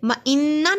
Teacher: نون پہ غنہ ہوگا، نون پہ شد ہے۔